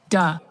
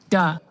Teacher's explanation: Plosive, because you block the airflow and then you release it at once, /d/ velum is up, in this case it is a voiced sound.